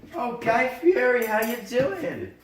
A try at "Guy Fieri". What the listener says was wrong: It's pronounced Fieri. You gotta roll that R.